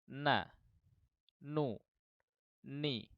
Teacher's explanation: dia punya sifat hunah atau dengung ya jadi mengalir dari sebagian keluar dari mulut sebagian keluar dari rongga rongga hidung